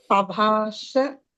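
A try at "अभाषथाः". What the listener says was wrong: అలా చదవకూడదండి, అభాషథాః అని చదవాలి. హత అక్కడి నుంచి వచ్చింది మధ్యలో. అభాషతాః అని చదవాలి. అభాషతాః అభాషతాః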